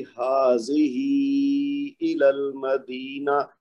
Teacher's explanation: ہا کے اوپر کھڑی زبر ہے تو وہ 2 حرکت تو اس کو کھینچنا ہے